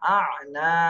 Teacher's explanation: মতন ভাবে উচ্চারণ করতে হবে আ নুন আলিফ জবর না আনা তাহলে নাতে এক আলিফ টান দিতে হবে